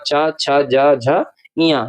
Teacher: तो चा वर्ग को स्पर्श संघर्षी कहा जाता है